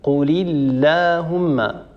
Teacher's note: اكثر من مناسبه فلا يصح ان نقول قولي اللهم ونفخم الالف الالف هنا مرققه لان سبقت بحرف مرقق